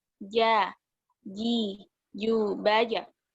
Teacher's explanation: Tengah-tengah lidah bertemu dengan langit-langit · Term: jim